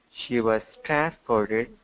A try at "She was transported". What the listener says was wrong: Very good. Very good. Much better. Good improvements.